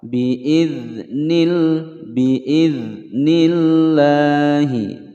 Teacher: ada huruf dzal berharokat sukun, tidak dipantulkan karena dzal bukan huruf qalqalah. Bi'idhnillahi, ada lam jalalah, sebelumnya kasroh, dibaca tipis.